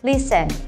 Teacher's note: Ini ternyata bunyi T-nya nggak usah dibaca, jadi langsung aja kita bilang listen. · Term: silent T